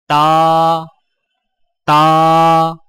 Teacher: زبان کی نوک کو سامنے والے اوپر کے 2 دانتوں کی جڑ سے لگا کر باریک آواز میں پڑھیں